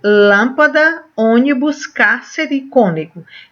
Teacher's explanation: e tem a certo porque a gente vai estar trabalhando isso proparoxítona a sílaba tônica é a antepenúltima sílaba